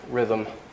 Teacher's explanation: In the case of rhythm, the M is voiced, M, and so the TH becomes voiced.